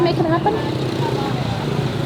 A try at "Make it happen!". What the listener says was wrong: You're doing the same note. You have to pick a different note.